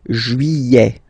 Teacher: Don't pronounce this final T, E-T here at the end.